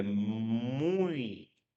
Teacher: O I já tem um som mais fraco, né? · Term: semivogal